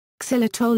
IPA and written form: ˈzaɪlɪtɒl (Xylitol)